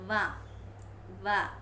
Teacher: Okay, f, and when you are pronouncing va, it is voiced, labiodental, fricative